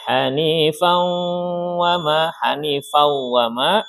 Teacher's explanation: tanwin bertemu dengan waw. Hukumnya idgham biguna. Ya, panjangnya 2 harokat.